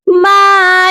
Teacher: اس کو ہم ایک الف کے برابر لمبا کریں گے